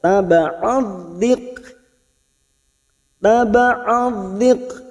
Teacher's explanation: huruf kaf memiliki sifat hamas pada saat disukun